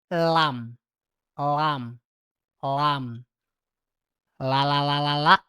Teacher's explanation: Jadi setengah lingkaran lidah kita dibentuk setengah lingkaran kemudian di sentuhkan ke gusi-gusi keras bagian atas.